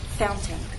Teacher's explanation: The standard pronunciation is fountain with a true T, fountain. The other pronunciation is what you'll hear in fast speech, fountain.